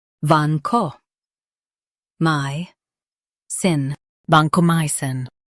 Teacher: Highlight my and soften cin.